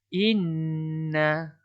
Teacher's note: Perlu dibaca dengung dua harakat. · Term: nun syaddah